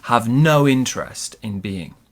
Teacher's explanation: So our pronunciation, it was have no interest. Have no interest in being friendly. We stress the word no.